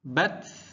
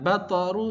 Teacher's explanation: ta sukun sifat hamnya keluarkan bat. Jadi bukan memantul ya jangan batru salah.